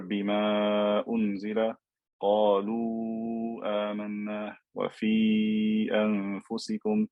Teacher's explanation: I'm stretching these letters of med because of the hamza in the next word. If I stopped on the word, I wouldn't stretch. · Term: med jaiz